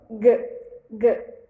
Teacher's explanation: a parte de trás da língua ela vai encostar lá na parte de trás do palato mole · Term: consoantes B lares